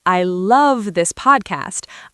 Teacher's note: if I say I love this podcast, I'm stressing the word I. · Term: word stress